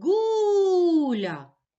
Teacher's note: гуля наголос падає на перший склад